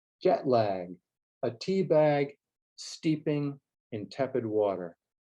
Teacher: Here we hear the short E in jet and tepid, and the long E in tea and steeping.